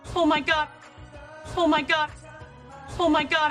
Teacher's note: the letter O making the ah as in Father vowel